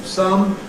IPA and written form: sʌm (some)